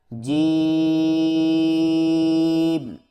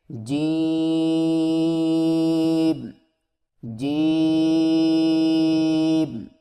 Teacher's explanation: زبان کے درمیان کو تالو کے ساتھ سختی سے لگا کر باریک آواز میں پڑھیں، یعنی جیم. اس کو تھوڑا سا کھینچ کے پڑھیں گے.